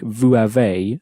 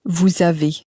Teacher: more or less push the S from the end of the word onto the vowel of the next one